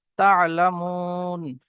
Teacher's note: ওয়াও মাদ্দা একালি পরিমাণ টান দিতে হবে। তা'লামুন, মিম ওয়াও নুন পেশ মুন, কাল্লা সাউফা তা'লামুন।